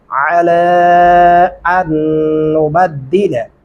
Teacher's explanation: अला आइन गले से अदा करेंगे · अलिफ को अगले शद वाले नून के साथ मिलाएंगे, जज़म वाले को छोड़ देंगे